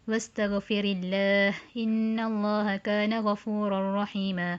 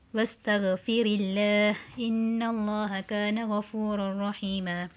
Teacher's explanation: Bacaan kedua Warsh akan baca dengan tarqiq ra